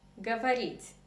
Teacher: the stress is on the last syllable the stress is on E